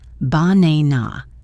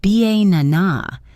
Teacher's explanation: in the word banana, the stress falls on the second syllable, banana. If you put the stress in the wrong place, like ba-na-na, the word can sound very strange, even if your pronunciation of the individual letters is perfect.